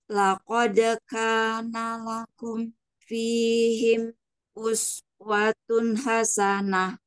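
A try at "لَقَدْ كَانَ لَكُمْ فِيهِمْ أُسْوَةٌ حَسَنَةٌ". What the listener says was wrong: Kalau bisa tidak terputus ya, Bu. Laqad kana lakum fihim. Masih masih seperti terjeda ya. Laqad kana lakum fihim uswatun hasanah.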